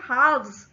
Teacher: जब हम कह रहे हैं halves तो l साइलेंट हो जाता है और सीधा व का साउंड आ जाता है हा के बाद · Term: मिसिंग l